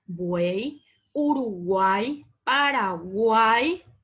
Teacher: conjunto de tres vocales consecutivas que se pronuncian en una sola sílaba una vocal abierta a e precedida y seguida de dos vocales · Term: triptongo